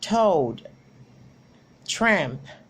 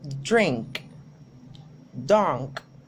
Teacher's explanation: The main difference between those is T is a voiceless consonant, while D is voiced. In the manner of articulation, both are plosive as well.